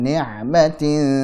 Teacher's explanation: Baik, alladzi yu'ti malahu yatazakka wa ma li ahadin 'indahu min ni'matin ni'matin, ainnya alirkan sedikit, tipiskan